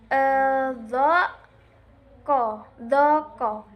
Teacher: huruf yang dibaca tebal karena sebagian besar dari pangkal lidah terangkat ke langit-langit semasa menyebutnya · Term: tafkhimnya huruf isti'la